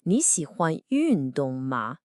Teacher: the question particle ma at the end has a neutral tone, it just sort of tags along.